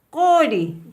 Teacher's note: La letra Q simple tiene sonido fricativo.